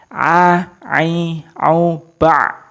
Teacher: makhrajnya ain berada di ausatil halqi atau di pertengahan, ya, di pertengahan tenggorokan